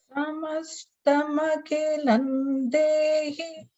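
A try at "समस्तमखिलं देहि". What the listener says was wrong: Makhilam, ki is Mahaprana. Makhilam.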